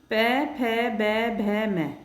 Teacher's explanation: इनका उच्चारण स्थान ओष्ठ अर्थात होठ होता है। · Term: प वर्ग